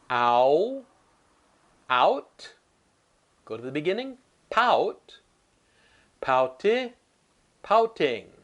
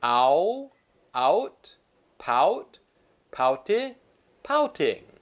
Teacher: mouth is very big like Apple ah and it gets small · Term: owl sound